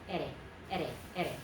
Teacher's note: The single R is just a flick of the tongue.